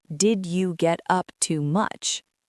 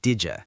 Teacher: the first 2 words melt into one sound. It sounds like didya.